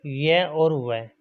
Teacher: इनका उच्चारण करने पर हवा बिना घर्षण के मुख से बाहर निकल जाती है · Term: अर्ध स्वर